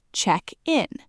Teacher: The stress shifts to the front.